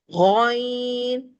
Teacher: اس کو ادا کرتے ہوئے ہمارا منہ کھلتا ہے اور ہونٹ اوول شیپ میں آ کے اس کو موٹائی کے ساتھ ادا کرتے ہیں